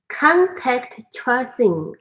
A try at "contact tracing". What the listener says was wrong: Tracing. Good.